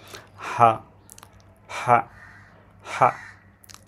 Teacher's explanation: গ্লোটিস থেকে একদম গলার ভেতর থেকে একটা প্রেসার আসে বাতাসে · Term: গ্লোটাল সাউন্ড